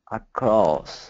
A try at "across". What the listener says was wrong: Don't move your tongue. Keep your tongue as low as possible.